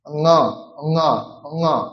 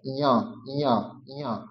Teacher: কণ্ঠ নাসিকা ঙ ঙ ঙ, আর তালু নাসিকা ঞ ঞ ঞ, দুটির মধ্যে পার্থক্য আছে